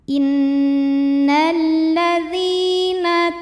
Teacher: karena ada ya sukun yang sebelumnya baris kasrah maka huruf Dal kita panjangkan dua harakat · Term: mad thi'i